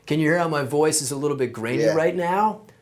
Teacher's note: vocal fry, which is the sound your voice makes when you kind of let it sit in your throat.